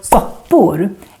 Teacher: But then we have the word soppor, and here the first O becomes short on the other hand, because we have two consonants coming after the O, the two P's.